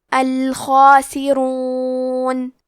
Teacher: تو ہمیں خا کو اور مد الف کو دونوں کو بھاری آواز میں پڑھنا ہے